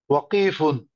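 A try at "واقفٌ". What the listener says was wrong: ওয়াতে টান হবে।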